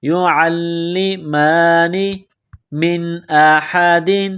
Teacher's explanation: لام کے ساتھ ملانا ہے، لام میں سختی کرنی ہے، یعلمان، میم کے اوپر کڑا زبر ہے، ایک الف کے لمٹ میں کھینچنا ہے